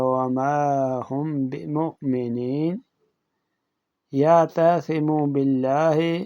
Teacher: میم ساکن کو اپنے مخرج سے نرم کر کے غنہ کے ساتھ پڑھا جائے گا۔ اس کو اخفاء شفوی کہتے ہیں۔